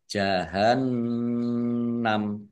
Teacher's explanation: wakafnya dibaca pendek karena tidak ada tanda panjangnya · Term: waqaf